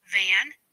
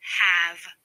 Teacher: The v is a voice fricative consonant.